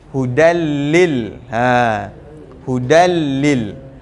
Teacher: Hudan kita akan terus hudallil ha hudallil ter terus ke lam masuk terus ke dalam lam leburkan terus tanwin tu ke dalam lam